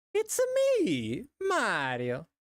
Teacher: You gotta go like really high, and then you kind of flatten it out at the end. And you put like an Italian accent on it. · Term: Mario voice